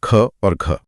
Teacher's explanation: महाप्राण जहां फेफड़ों से ज्यादा हवा धकेलनी पड़ती है।